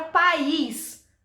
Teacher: o I, ele tem muito mais força do que na palavra paz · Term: sílaba tônica